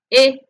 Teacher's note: redondeada y produce este sonido e para los que hablamos español muchos lo relacionan con una I otros con una e pero es un sonido intermedio · Enfoquémonos ahora en el fonema que tiene la forma de una I mayúscula de pequeña dimensión. Su nombre oficial es vocal casi cerrada, semianterior no redondeada